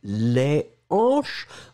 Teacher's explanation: si c'est au pluriel les hanches vous ne ferez pas de liaison ça c'est la particularité du h aspiré